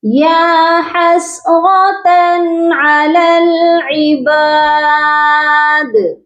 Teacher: دال جو ہے حروف قلقلہ ہے, جب ہم یہاں پر رکیں گے تو دال کو ساکن کر دیں گے